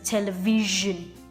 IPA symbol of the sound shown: ZSH